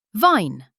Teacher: Lower lip plus top teeth.